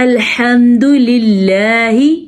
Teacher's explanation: لام کے نیچے زیر ہے تو یہ اللہ کا نام باریک پڑھا جائے گا